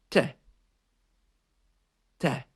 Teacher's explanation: We make this version of the letter T by pushing our tongue up to behind our teeth.